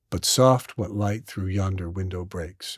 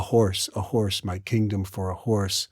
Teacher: it's five metrical feet with two syllables in each foot. And those syllables are unstressed stressed. So the rhythm of a heartbeat which is baboom baboom baboom baboom baboom. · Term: blank verse